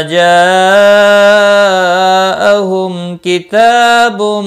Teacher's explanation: جاء مد متصل ہے، 4 الف کے برابر کھینچ کر پڑھیں گے۔ میم ساکن کے بعد کافہ اظہار شفوی ہوگا، تا کے اوپر کھڑی زبر ہے، 1 الف کے برابر کھینچ کر پڑھیں گے۔